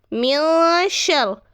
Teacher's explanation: نون ساکن کے بعد شین ہے تو یہاں پر ہمیں غنہ کرنا ہے. یہاں پر بھی اخفا کی قواعد ہو رہی ہے.